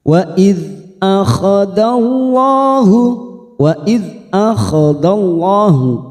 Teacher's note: lam jalalah yang didahului fathah kita baca tafkhim